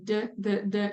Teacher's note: you can feel that that D sound you're touching that alveolar Ridge there